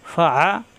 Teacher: ফা যাবর ফা, আইন যাবর আ কণ্ঠনালীর মাঝখানে চাপ দিয়ে